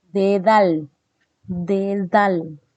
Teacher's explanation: dice dentales en los dentales pues hay la presencia de dientes se articula el contacto del ápice de la lengua es decir la puntita de la lengua con la cara interna de los incisivos superiores